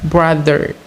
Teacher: It consists of three consonant sounds, either voiced bilabial stop ba, voiced palato-alveolar approximant ra, and voiced dental fricative the, and two vowel sounds, either mid-central stressed vowel a, and mid-central unrounded neutral vowel a.